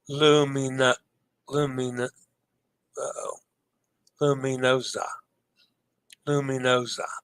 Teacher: the letter S has the Z sound when between 2 vowels, as in lasagna